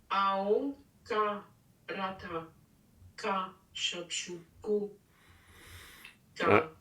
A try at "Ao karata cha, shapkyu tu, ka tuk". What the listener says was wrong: Ao karata cha, shapkyu tu, ka tuk. Oui, il faut juste que le son ao karata cha, le premier cha doit être très net, parce que si c'est cha, après ça sera tu, si c'est tu, après ça sera tuk, cha tu tuk, hein, cha tu tuk, ao karata cha shapku tuka tuk.